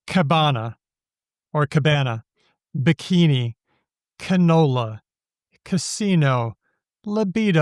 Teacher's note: You'll notice that the first syllable is always a schwa